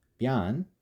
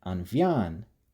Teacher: the word for woman ban spontaneously changing its initial b sound to a v sound